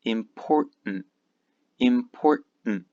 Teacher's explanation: both of these T's disappear and we just have an N